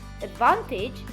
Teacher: the word advantage has the main stress in van so we have a weak syllable before the main stress this is a stress this is a weak syllable so if